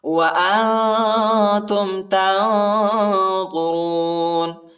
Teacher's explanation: ادھر بھی اخفا ہے اور ادھر بھی اخفا ہے، ضا اور را کو موٹا پڑھنا ہے